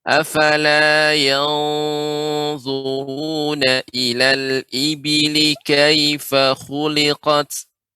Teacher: ya ketika membaca ikhfa pada bertemu dengan huruf dha, ikhfa pada huruf dha ini dibaca dengan tebal.